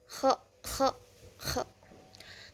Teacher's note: huruf kho itu keluar dari langit-langit belakang. Ihtikaki, cara keluarnya itu ihtikaki, adanya gesekan.